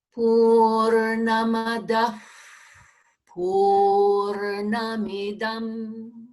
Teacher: So that Visarga places the sound or that breath at the lips.